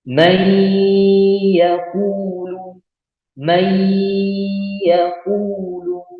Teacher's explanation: Nah, ini boleh teman-teman dengungkan. Tapi dengan batas 2 harokat saja, tidak lebih ya. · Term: idgham bi gunnah